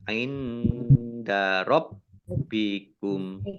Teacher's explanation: Nun sukun bertemu dengan huruf dal, bacaan ikhfa dibaca samar-samar. Rabbikum, baknya dibaca double, ada tasdidnya.